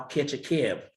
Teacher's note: The vowels are moving kind of up in front in the mouth. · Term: northern cities vowel shift